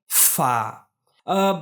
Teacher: ऊपर के जो दांत है उसको नीचे के होठ से मिलाकर हवा के प्रेशर से हम लोग अदा करते हैं